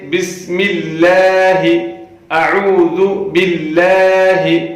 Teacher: جب بھی لفظ اللہ کے لام سے پہلے زیر آتی ہے تو اس لام کو باریک کر کے پڑھا جاتا ہے، اور یہاں پہ ایسا ہی ہے، لام سے پہلی جو لام ہے اس کے نیچے زیر ہے، اس لیے ہم اس لام کو باریک کر کے پڑھیں گے۔